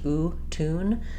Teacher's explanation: There's no y sound in it. It's just oo, tune.